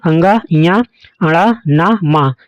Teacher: इन ध्वनियों के उच्चारण में मुंह और नाक दोनों का सहयोग होता है। इनके उच्चारण में कुछ वायु नाक से निकलते हुए एक अनुगूंज सी पैदा करती है। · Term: अनुनासिक